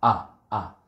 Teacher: hamzah ini, ya, ada makhrajnya itu adalah aqsal halqi, ada di tenggorokan, di pangkal, ya, pangkal tenggorokan, itu bersama huruf h, ya.